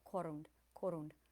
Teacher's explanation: Corund is accented on the first syllable.